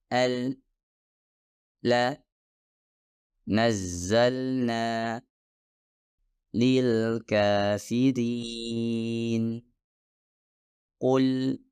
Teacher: udara akan keluar dari sekeliling lidah yaitu kedua Sisi lidah dan kemudian menghasilkan suara lam